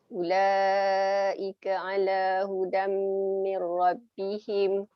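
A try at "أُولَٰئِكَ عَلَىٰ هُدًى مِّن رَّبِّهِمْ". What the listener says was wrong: Ulaika tu baca berapa harakat ulaika? 6, tapi Ustaz dengar tadi macam macam 4 Macam belum cukup lagi. Betul-betul cukup 6.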